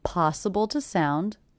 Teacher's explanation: The word to is definitely reduced to the schwa